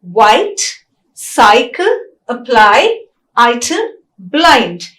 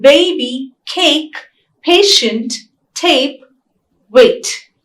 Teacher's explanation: both these are fronting diphthongs as well as closing diphthongs because the tongue glides towards the closed vowel E